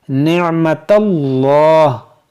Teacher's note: जलालत अल्लाह अज़्ज़ा वजल के लाम से पहले यहाँ पर ज़बर है, तो इसको हम मोटा पढ़ेंगे। निअमतल्लाह, इस लाम को मोटा करेंगे।